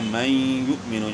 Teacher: اب اس میں جو ہے نا یعنی من یؤمن، نون ساکن کے بعد حروف یر ملون میں سے یا ہے، تو من یؤمن نون ساکن کا یا میں ادغام مع الغنہ ہوا